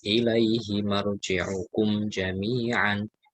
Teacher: Nah, marji'ukum, ya, mim sukun ketemu dengan jim dibaca jelas